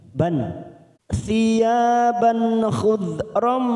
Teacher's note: fathatain yang bertemu kho, kita baca jelas tanpa mendengung, namanya bacaan idhar halki